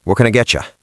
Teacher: In a New York accent, the what loses the t, the can becomes just a cn sound, and get you becomes getcha.